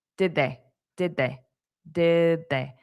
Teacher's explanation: So notice this final D. I'm not going to pronounce it that much. So more sound like d, because it'll sound more open.